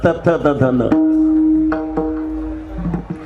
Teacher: याला दंत म्हणतात जीभ दाताला आदळत असते · मग ट ठ ड ढ ण याला तालव्य म्हणतात आणि त वर्गामध्ये त थ द ध न याला दंत्य म्हणतात. जीभ दाताला आदळत असते